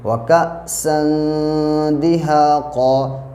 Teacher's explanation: ناک میں تھوڑی دیر آواز کو روکیں گے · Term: اخفا